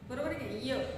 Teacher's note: याचा जिभेच्या ताळ्यातून काय होतो, उच्चार होतो म्हणून तालव्य